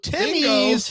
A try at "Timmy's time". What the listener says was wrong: There's a pause in between Timmy's time. But you said Timmy's. Time.